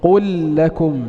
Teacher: ننطق بلام مشددة واحدة